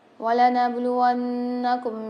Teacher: وَلَنَبْلُوَنَّكُمْ میں با کے اندر قلقلہ کریں گے، نون کے اوپر مشدد آ رہی ہے، یہاں پر ہم غنہ کر کے پڑھیں گے۔